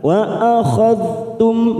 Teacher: dal sukun jangan sampai memantul karena bukan qalqalah, kita tahan.